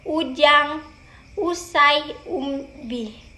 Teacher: pada vokal u bibir dimajukan sedikit dan bentuknya agak bundar